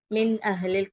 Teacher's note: சுகூன் செய்யப்பட்ட நூன்க்கு அப்புறமா ஹம்ஸா வந்திருக்கு சிஸ்டர் நூனை கிளியரா ஓதுருவோம் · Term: இஸ்ஹாருடைய சட்டம்